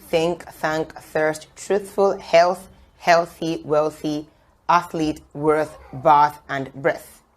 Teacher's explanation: placing the tip of your tongue in between the front part of your upper and your lower teeth and allowing the air escape gradually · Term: voiceless th sound